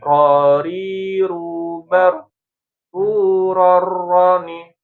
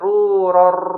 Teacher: Jangan dibanyakin, jangan ruror enggak. Ya, ro dalam bahasa Arab itu takrirnya tidak berlebih-lebihan ya. Jangan juga nggak ada getaran.